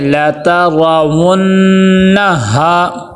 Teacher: نون مشدد ہے، غنہ ہوگا